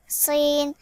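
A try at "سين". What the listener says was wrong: সিন বলতে যে তোমার গলার মধ্যে চলে যাচ্ছে, যেন সিন এভাবে হয়ে যাচ্ছে। ক্লিয়ার বলতে হবে সিন সিন সিন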